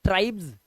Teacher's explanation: जैसे अब इसे ट्राइब्स क्या पढ़ते हैं, ट्राइब्स, लास्ट में एस लगा हुआ है, जनजातियां बोलते हैं, तो इसका लास्ट में जो उच्चारण होता है ना वो होता है ट्राइब्स। आपको एस नहीं सुनाई देगा, आपको जा का सुनाई देगा, जा। जैसे ये है जा, प्योर जा, लेकिन जा के नीचे बिंदी लगाते तो ये नुक्ता हो जाता है, तो ये जा पढ़ा जाता है, जा जा जा। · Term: जा का साउंड